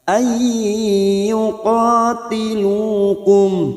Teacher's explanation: nun sukun bertemu ya idgham bi gunnah, siap masuk dan mendengung masuk ke huruf berikutnya yaitu huruf ya dan mendengung selama 2 atau 3 harokat.